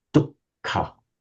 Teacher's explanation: double the K, but with no initial H